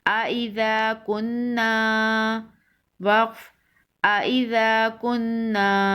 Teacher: حمزہ زبر آ، حمزہ نون زیر ان، ان، نون الف زبر نا، نا، وقف نا، نون مشدد ہے تو یہاں پر غنہ کریں گے